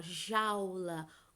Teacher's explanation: O som mais forte é o do A e não do U. Elas são uma vogal e uma semivogal, que o som mais forte será o do A, tá? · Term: ditongo decrescente